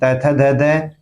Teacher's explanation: जीभ दांतों को स्पर्श करती है दंत्य ध्वनि त थ ध ध।